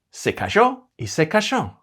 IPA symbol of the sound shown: ʃ